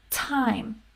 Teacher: beginning t is a little bit different than an ending t so beginning t will have that puff of air